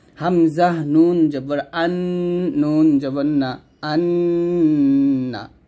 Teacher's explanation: এখন নুনের উপর তাসদিদ আসছে, এখানে কি করতে হবে? গুণনা করতে হবে।